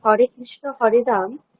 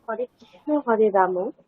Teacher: বাংলা ভাষাতে শব্দের শেষে অয়ের উচ্চারণ আমরা ওকারের মতো করে থাকি